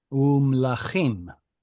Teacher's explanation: when a conjunction vav shows up in front of a mem, we're told it turns into u because both vav and mem were bilabials, and so we get things like umlachim, right, and kings.